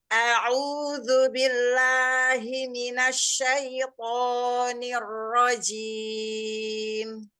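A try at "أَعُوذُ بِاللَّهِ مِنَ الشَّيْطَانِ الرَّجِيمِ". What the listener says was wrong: Lahnya enggak kepanjangan, Bunda. Mm. Tadi masih kepanjangan.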